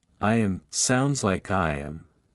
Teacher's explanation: in a vowel sound and the next starts with a vowel native speakers often add a slight Glide like a w or Y sound to link them smoothly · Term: vowel to vowel linking